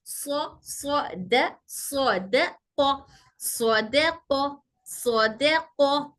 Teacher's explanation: सौद में आवाज मोटी करना है, दाल में हल्की करना है, और कौफ में फिर मोटी करना है। सौद, सौद सफिया है, हमारी जबान की नोक दोनों दांतों के किनारों पर टच होगी।